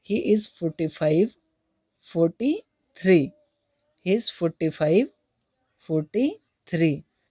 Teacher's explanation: next, ही इज़ 45 43, तो यहाँ पर एक 45 जैसे कि गलत बोला था, मतलब वास्तविक में क्या था 43, मतलब जो कुछ कहा हो उसको सही करना हो तो उसमें फॉलिंग राइजिंग टोन का प्रयोग किया जाता है